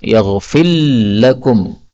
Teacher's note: Ini makhrajnya kan berdekatan, sehingga boleh idgham, ra-nya diubah menjadi lam